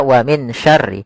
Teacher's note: Ada bacaan ikhfa pada lafal min syarri yaitu minya langsung dilafalkan ke sya. Nunnya kita samarkan kepada huruf syin maka dia dibaca wamin syarri. Jangan dibaca dengan jelas karena kalau jelas suara nunnya kita namakan izhar.